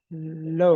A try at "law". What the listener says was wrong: That's L-O-W. Low. Law. Aw sound. See, it is still A, but we pronounce it as law.